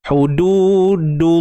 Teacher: huruf lam ni dia apa-apa pun kita pergi balik makhraj dia, hujung lidah ke langit keras.